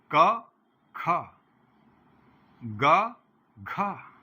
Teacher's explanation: का में प्राणवायु कम निकल रही है, खा में ज्यादा निकल रही है, गा में कम निकल रही है, घा में ज्यादा निकल रही है।